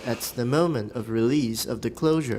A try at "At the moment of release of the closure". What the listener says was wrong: At the moment of release. Release is too long.